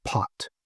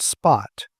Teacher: But when you put an S in front of that to get the word spot, that puff of air all but disappears. And so we have a P that's accompanied by a little puff of air and we have a P that isn't. And so those are alophones of P.